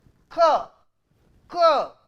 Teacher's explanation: back of the tongue is raised and touches the velar position, then we call velar sound.